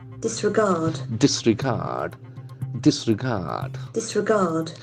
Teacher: So the accent falls on third syllable, disregard.